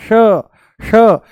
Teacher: जैसे ही हम बोलते हैं श जैसे ही बोलते हैं हम श मूर्धा ऊपर से बोला जाता है श। जीभ को थोड़ा सा ऊपर घुमा के तालू से लगा के बोला जाता है